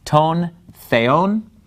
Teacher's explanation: So notice the word for God, theon, the accent is on the second syllable. That's where the mark is.